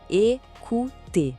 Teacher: O E inicial é bem agudo e o OU tem aquele som de U do português.